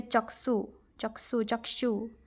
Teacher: क्ष का उच्चारण हिंदी में क्ष, क हलंत मूर्धन्य स जैसा होता है, जबकि ओडिया में इसका उच्चारण क्ष होता है।